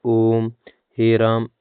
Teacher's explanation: प्लत स्वर इनके उच्चारण में दीर्घ से भी अधिक समय लगता है। इनका प्रयोग किसी को पुकारने या संगीत में होता है।